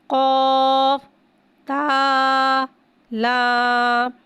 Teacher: قاف کو ایک الف یعنی 3 حرکات کے برابر کھینچ کے پڑھیں گے. قوف حرف مستعلیہ ہے لہذا اس کی آواز حلق سے موٹی ادا ہوئے گی۔ تا کو ایک الف یعنی 2 حرکات کے برابر کھینچ کے پڑھیں گے۔